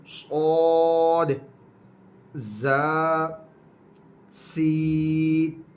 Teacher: اس کے بعد حروف صفیریہ یہ تین ہیں، صاد زا سین۔ زبان کی نوک اور دونوں دانتوں کے اندرونی کنارے سے ادا ہوں گے